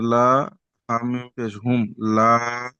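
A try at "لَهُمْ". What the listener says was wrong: লা টানাবে লা টানা হবে না লাহুম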